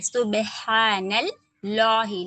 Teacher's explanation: صبح پہ با پہ کلکلا صبح دونوں ہونٹ کو آپس میں ملا دیں گے. سبحان اللہ لام جلالہ موٹا پڑھیں گے. نون کو لام میں ملائیں گے کیونکہ مشدد ورڈ ہے.